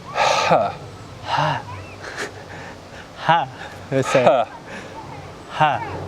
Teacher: so you've got to really aspirate it more from the lungs deeper breath